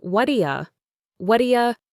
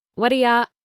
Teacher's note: The first 3 words, what do you, are almost always reduced in fast, casual speech. They blend together to sound like what'ya. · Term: reduction